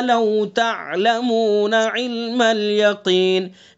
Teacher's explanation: تا کے بعد عین ہے، عین کو صاف پڑھیں گے، حلق سے پڑھیں گے.